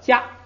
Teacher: 放在第2节出现的话呢，既变成平调又变成不送气 ，就变成了他们相应的那个第1竖行的那个读音。所以现在这个卡就变成了加，哎，就变成了加。这样的话加它的声母是这个，再跟后边这个无呢，因为后加字是撒，要变音，无变成吁，哎，还要变调，变成这个3声，那就成了举，那个曲，这个单独读的时候不